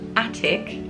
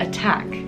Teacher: We see one starts at the beginning with our stress and the other goes at the end.